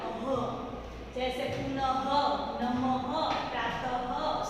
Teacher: इसका उच्चारण ह की तरह होता है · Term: विसर्ग